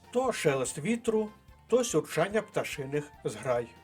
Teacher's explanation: Зверніть увагу на притищення голосу і відповідні паузи